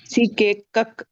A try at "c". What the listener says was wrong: కక్ కాదు క అంతే క. ఇప్పుడు ఒక ఎగ్జాంపుల్ చెప్తా మీకు అర్థమయ్యేటట్లా. ఇది బిఎల్ఏ సికే ఏమైతుందమ్మా?